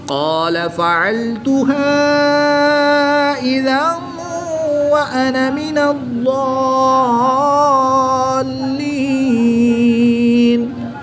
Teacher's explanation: 2 زبر کی تنوین کے بعد واو حرف یرملون میں سے ہے تو یہاں پر ادغام مع الغنہ ہوگا، یہاں پر غنہ کر کے پڑھیں گے۔ ضاد مشدد پر زبر ہے، اس کے بعد الف ہے، الف مدہ ہوگا، الف مدہ کے بعد سکون اصلی ہے تو یہاں پر مد لازم ہوگی، 3 سے 5 الف تک کھینچ کر پڑھیں گے۔